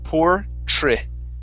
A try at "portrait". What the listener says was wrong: So you're saying chert, portrait. Instead of chert, it's trit, portrait.